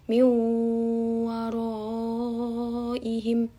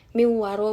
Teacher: nunnya tuh dilebur ke wawu jadi miu. Nah ini ada gunnahnya, gunnah itu berarti dua ketukan, miu waroihim gitu, bukan miwaro, bukan cuma ditasdid doang, bukan cuma dijadiin wawu doang, tapi ada gunnahnya gitu.